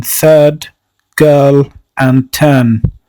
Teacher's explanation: this long vowel is MidCentral and by MidCentral we mean that it is in the middle position vertically and horizontally the lips have neutral shape